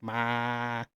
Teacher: Ping is a level tone. It produces syllables with a steady pitch.